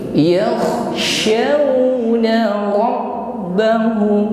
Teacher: huruf shin di sini lebih tampak tekanan udaranya, ya, dibandingkan huruf sin.